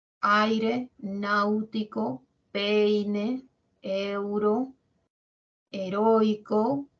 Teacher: Primero va la abierta y luego la cerrada cuál suena más la abierta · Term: decreciente